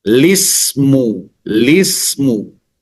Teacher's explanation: Kemudian membuang huruf hamzah. Ya. Dan memulai huruf lam kasrah.